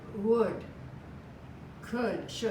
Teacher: the L is silent we hear the D